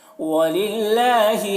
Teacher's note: وَلِلَّهِ اللہ کے لام کو باریک پڑھیں گے